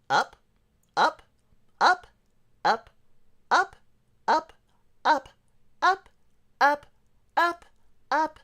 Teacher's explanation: i have hit the higher register and my voice is kind of breathy